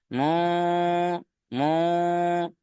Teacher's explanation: তারপর দেখেন মুফাক্কিনা, নুন সাকিনের পরে হুরুফে ইকফা 15টি অক্ষরের মধ্যে ফা রয়েছে, তাই নুন সাকিনকে আমরা একালিফ পরিমাণ গুণনা সহ পড়বো। মু মু, প্রত্যেকে আওয়াজটা নাকের মধ্যে তুলবেন।